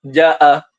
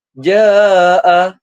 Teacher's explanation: mad ni penting kerana untuk mengimbangi tekanan bunyi hamzah yang keras kerana berlakunya glottal stop dengan panjangan huruf mad agar aliran suara lebih harmoni dan teratur. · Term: Mad wajib mutasil